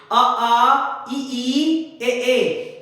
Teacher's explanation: इनका उच्चारण करके देखो, होठ जो है गोल नहीं होंगे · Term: अवृत्तकार